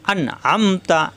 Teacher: এই নুন সাকিনের পরে আইন আসছে ইজহার স্পষ্ট হবে, গুণ হবে না